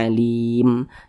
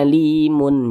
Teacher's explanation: mim disukunkan karena kita berhenti atau berwakaf tepat di huruf mim huruf mim tidak dibaca panjang Makanya huruf mim kita sukunkan begitu sehingga dibaca Alim Jangan dibaca Alimun jangan tapi huruf mimnya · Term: huruf mimnya kita sukunkan